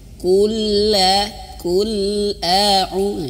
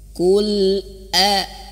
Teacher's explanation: a-nya harus jelas terputus suaranya Jangan sampai nyambung ke huruf lam